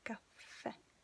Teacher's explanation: Caffè. Okay, it has an accent, so your voice has to concentrate on that. You have to really stress this last letter.